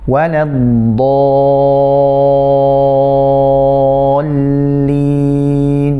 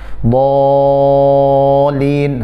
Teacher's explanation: Kemudian tipiskan, tahan lamnya sebentar karena di sini dia bertasydid. Setelah itu baru mentipiskannya.